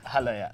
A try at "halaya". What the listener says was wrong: You say ha? La? Ya? The stress is on the ya at the end, so halaya. Halaya.